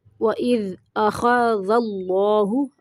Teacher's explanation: اللہ کا لام موٹا پڑھیں گے